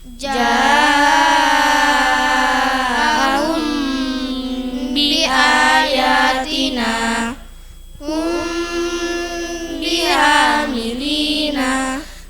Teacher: Mim sukun bertemu ba samar bacanya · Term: ikfa syafawi